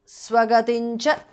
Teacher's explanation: అనుస్వార changes to న్ which is the nasal of the చ వర్గ · anuswara changes to nya, which is the nasal of the cha varga